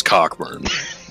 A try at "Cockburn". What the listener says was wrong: He says his name. That's just how it's how it's spelled. Just because there's a C and a K doesn't mean you pronounce it cock.